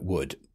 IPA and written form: wʊd (wood)